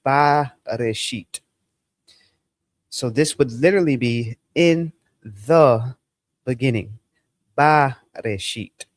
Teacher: what happens to the dagesh is it causes lengthening to the vowel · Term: qamats